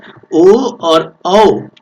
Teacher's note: ओ और औ का उच्चारण हम कंठोष्ठ मतलब कंठ और ओष्ठ की सहायता से हम ओ और औ का उच्चारण कर पाते हैं।